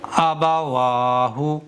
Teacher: حمزہ کو نہیں کھینچیں گے، با کو نہیں کھینچیں گے، واو کو کھینچیں گے کیونکہ واو پر کھڑا زبر ہے۔ تو میں نے اسی طرح سے پڑھا تھا، حمزہ کو اور با کو اور ہا کو بالکل بھی نہیں کھینچا ہے، واو کو کھینچا ہے۔